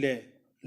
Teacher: मुख द्वार मध्य में बंद हो जाता है और हवा दोनों ओर से निकल जाती है, उसे हमारे पार्श्व कहते हैं।